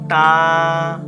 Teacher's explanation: জিহ্বার আগা উপরের দাঁতের গোড়ায়। তা।